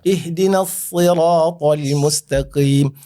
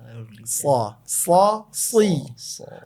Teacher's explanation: ujung lidah berjumpa dengan gigi seri bagian depan, bawah. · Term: huruf sad